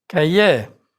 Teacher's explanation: R is not pronounced in words ending in IER